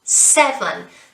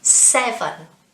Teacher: don't forget it's the first syllable which is stressed